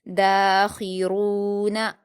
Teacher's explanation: نون پر حرکت، اس کو بھی جلدی پڑھ کر باریک پڑھیں گے، اس لیے نون پر بھی آپ کے ہونٹ پھیل جائیں گے۔